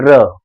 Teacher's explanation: जब आप र बोल रहे होंगे तो देख रहे होंगे कि ऊपर जीभ जाके खड़फड़ करके रह जा रही वहीं पे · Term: लुंठित व्यंजन